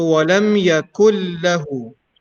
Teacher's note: The noon is completely merging into lam, so the pronunciation of noon won't be there.